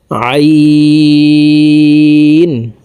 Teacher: আইন হরফকে হালুকের মধ্যখান থেকে চাপ দিয়ে উচ্চারণ করব কারণ আইনের মাখরাজ হালুকের মধ্যখান থেকে হবে আইন কাফ লাম মিম